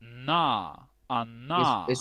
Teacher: una posición alveolar, que significa que nuestra lengua toca esa zona que está detrás de nuestros dientes